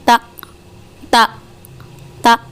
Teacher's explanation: ایک دم جھٹکا دے کے۔ اس کے اندر جھٹکا ہے اور سختی بھی ہے، اور آواز اونچی بھی ہے اور جلدی بند ہو جاتی ہے، یعنی اس کے اندر شدت بھی ہے۔